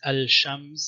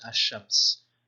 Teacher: the al is probably not assimilated, so it's al-shams and probably not ash-shams